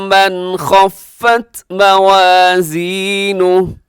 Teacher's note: من خفت پہ نون ساکن کے بعد خا ہے تو یہاں اظہار حلقی